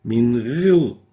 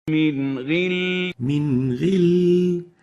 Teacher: we don't over-velarize or exaggerate the tafkhim of the ghain